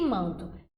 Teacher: esse a seguido do n é o que a gente vai chamar de nasalização